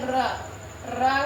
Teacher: रा बोलेंगे तो आपकी जीभ लुढ़कते लुढ़कते बोलनी पड़ेगी। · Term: लुंठित व्यंजन